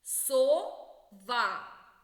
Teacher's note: сова другий склад наголошений